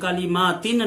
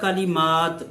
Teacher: ہم وقف کریں گے تو بن جائے گا کلمات، نون کی آواز ختم ہو جائے گی